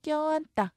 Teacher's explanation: 안이 어간인데 받침 니은이죠. 뒤에 어미 따라왔죠. 그렇다면 된소리, 쌍디귿으로 바뀝니다.